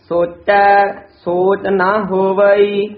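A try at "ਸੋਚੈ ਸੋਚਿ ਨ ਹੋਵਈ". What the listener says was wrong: सोचै पद दे भी थोड़ा जा ठहरा, यमक ची ला के बोलना है, सोचै सोच नहीं कहना, सोचै सोच ना होवई, नन्ना मुक्ता है, कई ना नन्ने कन्ना ला देंदे हन, नन्ने मुक्ते दा उचारण ना, जे नन्ने का कन्ना लावांगे तां एक मात्रा वध जाएगी, दो मात्रा हो जाएगी, एक मात्रा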